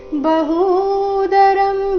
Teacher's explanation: ಹೂ ಮಾತ್ರ ದೀರ್ಘ ಈ ಶಬ್ದದಲ್ಲಿ